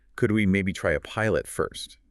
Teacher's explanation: That little lift at the end makes it a suggestion. Less demanding. · a rising tone tends to soften things, makes it sound more like a question, or opens the door for discussion